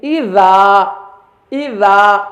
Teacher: اذا الف ہے، الف سے پہلے ذال ہے اور ذال باریک حروف میں سے ہے، اس وجہ سے الف کو بھی ہم باریک پڑھیں گے. اذا، اس کو ہم ایغو نہیں پڑھیں گے، ایذو ایسے نہیں، اذا، اذا الف کو بھی باریک پڑھیں گے.